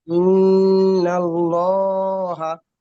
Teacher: লামকে পুর করে পড়তে হবে, মানে আল্লাহর লামকে এক্ষেত্রে পুর করে পড়তে হবে।